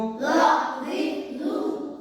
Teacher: জ জিহ্বার আগা হতে মোটা ভাবে আদায় হবে।